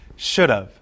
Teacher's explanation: in perfect modals the word have is usually reduced to of listen should have the word have is unstressed in perfect modals · Reduction of have in perfect modals. In perfect modals, the word have is usually reduced to of.